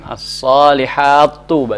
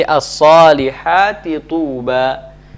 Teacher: Misalnya, ya, dalam ayat as-salihat tuba, salihat tuba, ya, ada ta, ya, as-salihati tuba, as-salihati tuba, keduanya berharokat, maka hukum di sini, ya, hukumnya di sini adalah wujubul izhar, wujub al-izhar, ya, wajibnya dibaca izhar, tidak boleh dimasukkan